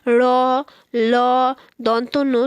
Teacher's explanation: জীব এসে আমাদের দন্তমূল স্পর্শ করে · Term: দন্তমূলীয় ব্যঞ্জন